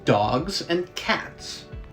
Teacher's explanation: because they involve a complete stoppage of airflow through the mouth s however is known as a fricative because air keeps going through your mouth and makes sound based on that friction · d g C and T are all known as stops because they involve a complete stoppage of airflow through the mouth s however is known as a fricative because air keeps going